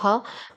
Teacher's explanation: कंठ महाप्राण घोष व्यंजन वर्ण का उदाहरण है